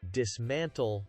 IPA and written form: dɪsˈmæntl (dismantle)